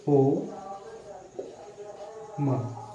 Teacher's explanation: इसमें तिगुना समय लगाकर हम ओम का उच्चारण करते हैं। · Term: त्रिमात्रिक स्वर